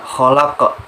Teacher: Khalaq di sini sama dengan di awal, namun di sini ada qalqalah kubro karena di situ ada huruf qalqalah yaitu qaf yang berada di akhir kalimat